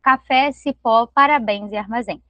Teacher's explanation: Enquanto as monossílabas são palavras que não se separam, as oxítonas elas vão se separar e a última a sílaba tônica vai ser encontrada na última sílaba